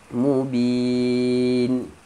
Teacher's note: Ulaika fi dhalalim mubin, tanwin bertemu mim, masukkan tanwin ke dalam mim, dengung